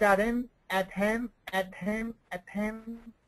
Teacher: she flaps the T